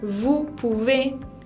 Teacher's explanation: La palabra vous lleva una O y una U que se combina para producir el sonido U. La S final no se pronuncia.